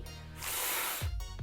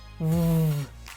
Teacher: Podría ser porque en alto alemán medio, es decir, lo que se hablaba desde el año 1050 hasta el 1350 y de donde viene el alemán moderno, en algunos dialectos, el sonido /F/ de F, se sonorizó, o sea que /F/, pasa a /V/